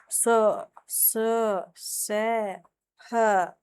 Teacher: उष्म व्यंजन होता है [संगीत] जिन व्यंजनों का उच्चारण करते समय वायु मुख से किसी भी स्थान विशेष पर घर्षण या रगड़ खाकर के निकल जाए। यानी कि ऊष्मा पैदा करे, गर्मी पैदा करे।